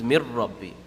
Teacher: There's going to be no ghunna in complete idgham.